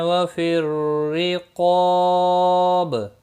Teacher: لی یا مدہ ہے، 1 الف کے برابر کھینچ کر پڑھیں گے۔ وفی الرقاب را زیر کی وجہ سے باریک پڑھا جائے گا، قاف مستعلیہ ہے، پر پڑھا جائے گا، اس کے ساتھ میں الف بھی آیا ہے، یہ بھی پر پڑھا جائے گا، اور الف مدہ بھی ہے، 1 الف کے برابر کھینچ کر بھی پڑھیں گے، اور وقف کی صورت میں با ساکن پڑھا جائے گا، اس پر قلقلہ بھی ہوگا۔